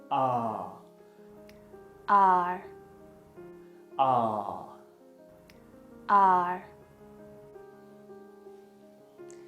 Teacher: its technical name is the low back unrounded vowel